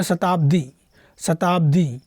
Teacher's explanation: देखिए बोलते हैं शताब्दी, शताब्दी कि शताब्दी, ऐसे तो ना बोलते हैं शताब्दी, क्या बोलते हैं शताब्दी। तो दी को खींच के बोल रहे हैं, यानी दीर्घ स्वर होना चाहिए। तो ये दी में दीर्घ स्वर है, इसमें तो ह्रस्व स्वर है, यानी इसमें तो ह्रस्व स्वर है, इसलिए गलती होगा।